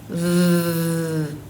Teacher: Touch your throat. Is it vibrating? V. Yes. So, this is a voiced sound.